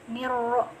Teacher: Ada alif lam bertemu dengan huruf ro, yaitu huruf syamsiyah. Jadi dimasukkan saja langsung ke huruf ro, dimasukkan. Nah, lamnya nggak usah dibaca. Niro. Nah, ro nya dia punya hukum tafkhim juga seperti tadi niro. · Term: idgham syamsi